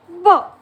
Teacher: म्हणजे दोघं ओठ आपले बंद करून आणि प्रेशरने आपल्याला साऊंड काढायचा आहे ब असा